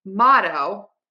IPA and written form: ˈmɑtoʊ (MOTTO)